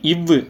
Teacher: கீழ் இதழும் மேல்வாய் பல்லும் இணைவதால் பிறக்கும் எழுத்து